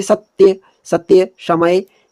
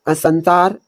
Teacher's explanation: हमारे जो आगे वाले दांत हैं उनके पीछे वाले हिस्से को हमारी जो जीभ है वो टच कर रही है। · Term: सपेरे वाले स